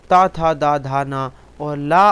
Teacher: ये दंत से बोले जाते हैं